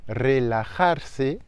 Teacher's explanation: le r en tout début de mot est double